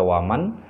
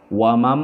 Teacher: nunnya di sini yang bersukun seakan-akan tidak dibaca, tidak lagi dibaca waman, tetapi wamam, dan terjadi dengungan atau sengau di situ sebanyak 2 ketukan, 2 harakat, dibaca wamau, wamam ya. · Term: idgham bi gunnah